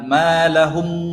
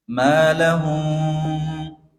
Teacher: Karena ini namanya ikhfa syafawi. Jadi mimnya itu tidak terlalu rapat. Terbuka sedikit sekali.